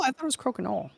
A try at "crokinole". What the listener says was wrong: The L is silent, as is the E after it.